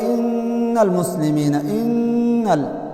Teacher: چې نون ادا کوي نون مشدد نو جبه په خپل مخرج د نون کې کلک لګي